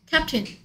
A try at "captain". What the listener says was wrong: 이 부분이 조금 조심해야 되죠. 캡테인이 아니고 캡틴. 캡테인 될 것 같은데 캡틴.